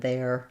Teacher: This word there, same, it has the air diphthong